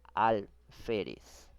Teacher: Segunda palabra, alférez. Lleva la mayor fuerza de voz en la penúltima sílaba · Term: grave